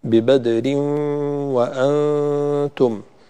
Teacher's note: هنا إدغام بغنة، فلا بد أن نأتي بالغنة